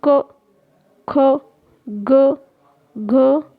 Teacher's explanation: जिह्वा यानी जो जीभ होती है हमारी के पिछले भाग से कोमल तालु का स्पर्श होता है, कंठ ध्वनियाँ कहलाती हैं। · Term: कंठ व्यंजन